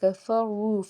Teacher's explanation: الَّذِينَ میں یا ساکن سے پیچھے زیر ایک الف کے برابر کھینچ کے ادا کریں گے۔ کفروا میں وا کو پر پڑیں گے کیونکہ اس کے اوپر پیش ہے اور واو ساکن سے پیچھے پیش ہونے کی وجہ سے اس کو ایک الف کے برابر کھینچیں گے۔